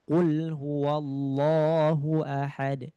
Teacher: Jadi lam fi'il semuanya dibaca dengan jelas lamnya